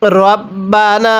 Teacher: অনেকেই আমরা এই শব্দটিকে রাব্বানা পড়ি। যদি রকে রা পড়ি তাহলে পড়াটা সহি শুদ্ধ হবে না।